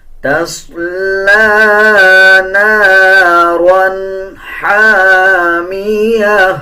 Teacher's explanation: صاد کو پر یعنی موٹا پڑھا جائے گا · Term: موٹے حروف